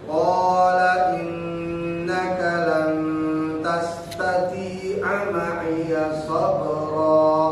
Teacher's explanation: Mad asli innaka, nun bertasdid kudu ditahan, dua ketukan minimal. Nun mati ketemu tak, dia menjadi ikhfa, lalu didengungkan. · Tastati, ada ya mati, maka dia menjadi mad, dua ketukan.